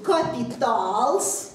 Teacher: Соответственно, капитал – это будет капиталс. Наше ударение в латышском отразится в виде долготы, и на конце мы поставим «с».